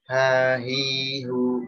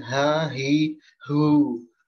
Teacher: Ya, dia fathah kasrah dhammah tetap tipis. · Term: huruf tipis